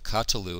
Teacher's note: There we go, meteg to show that this is a vocal schwa. So we have a vocal schwa, which is reduced from the theme vowel